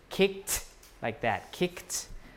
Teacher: So K is voiceless, so you add the T. · You have a T allomorph if the sound before it is voiceless.